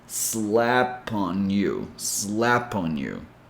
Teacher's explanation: The last consonant of each word connects with the first vowel sound of the word that follows it. So just imagine that you're taking the last consonant sound and bringing that sound to the next word.